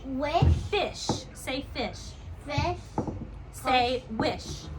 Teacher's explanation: the sound for sh is a sound that just continues on and on and on and on and on